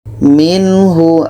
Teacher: ada nun mati bertemu ha ini izhar halqi dua-duanya harus jelas Nun jelas ha jelas tidak ada dengung